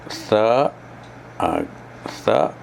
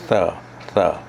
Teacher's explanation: ujung lidah kita letak di umbi gigi atas, di pangkal gigi atas.